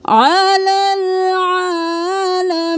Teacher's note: आइन को गले के दरमियान से